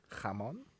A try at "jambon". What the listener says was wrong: pronouncing it like Spanish. Don't do that.